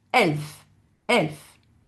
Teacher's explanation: Quand un mot allemand commence par une voyelle, on a ce qu'on appelle le coup de glotte. Donc c'est le e.